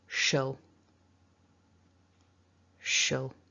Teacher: So when we think about that word shall, we just looked at it with a strong a. So we replace that a with the schwa and it becomes shall. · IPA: /ə/